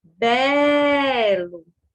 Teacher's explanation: bé é a sílaba tônica